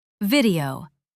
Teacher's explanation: Does it start with V or W? Answer: V, teeth on lip.